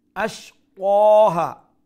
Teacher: তাড়াতাড়ি আইন, make sure you pronounce the middle throat. Ashqaha, qaf full mouth letter and standing fatha stretches to 1 alif long, then ha 1 alif long as well. Even if you stop, you stretch 1 alif long, and even if you continue still you stretch 1 alif long.